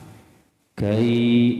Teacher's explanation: tempat keluarnya huruf kaf itu di aqsal lisan. Jadi sebelah depan daripada makhraj qaf paling jauh itu qaf ya.